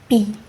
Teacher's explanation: Kinds of consonant production is, for the first, bilabial, when two lips are put together